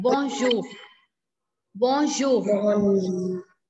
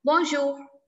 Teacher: And in the end, we are not giving r sound. We are not saying bonjour.